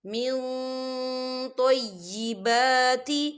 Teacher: یا ایہا الذین آمنوا قلوا من طیبات، من طیبات، دیکھیے من، یہاں نون ساکن ہے اور نون ساکن کے بعد تو آ رہا ہے، اور تو جو ہے اکفا کا ورڈ ہے، تو ہم یہاں اکفا کریں گے، نون ساکن کی آواز کو ناک میں چھپائیں